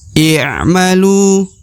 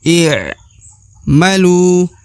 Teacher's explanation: di depan huruf lu terdapat wau sukun ya wau sukun atau wau mati ya maka huruf Lu harus dipanjangkan dua harakat